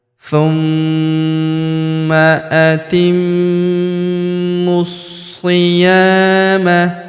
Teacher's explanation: Huruf ya kita panjangkan 2 harokat karena terdapat alif di depannya.